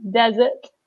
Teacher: So again, we stress the first syllable, desert.